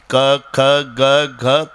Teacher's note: तुमच्या बोटाला स्पंदन जानवेल त्याचा उगम कंठातून आहे